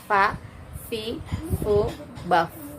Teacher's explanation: bukan pa, bukan 2 bibir, tapi gigi seri atas dengan perut bibir bagian bawah